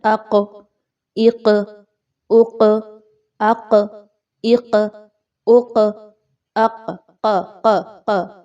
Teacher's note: زبان کا آخری حصہ اوپر سافٹ جگہ سے لگ رہا ہے، اگر آپ غور کریں تو نرم حصے سے لگ رہا ہے۔ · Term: قاف